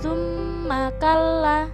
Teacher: Maka cara membacanya juga mendengung dua ketukan atau satu alif. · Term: bacaan ghunnah